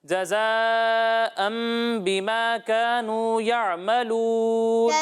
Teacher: یہاں مد متصل ہے تو اسے 2 یا 2.5 الف کے برابر کھینچیں